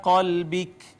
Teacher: با حروف کلکلہ میں سے ساکن آئی ہے، ہم نے کلکلہ کیا